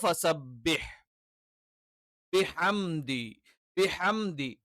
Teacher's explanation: ബ എന്ന് പറയുമ്പോൾ നമ്മൾ ശരിക്ക് ശക്തമായി തന്നെ ചുണ്ട് അടച്ചു വെച്ചുകൊണ്ട് ഉച്ചരിക്കുന്ന ഒരു അക്ഷരമാണ്